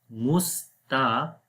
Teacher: This ta will be light and qaf will be bold.